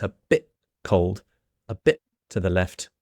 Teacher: if you want to do it really authentically, you can cut off the T or stop it there. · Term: stop that T